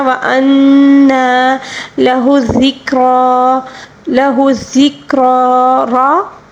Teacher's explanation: را کے اوپر کھڑا زبر ہے، اس کو پر بھی پڑھیں گے اور وقف کے دوران کھڑا زبر میں کوئی تبدیلی نہیں ہوگی، یہ اسی طرح ہی پڑھیں گے، ٹھیک ہے۔